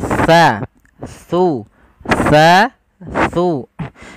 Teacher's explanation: Makhrajnya ujung lidah kita menempel dengan gigi seri atas kita.